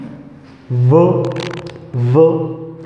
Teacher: use your voice to make the sound v. So it is a voiced sound. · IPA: /v/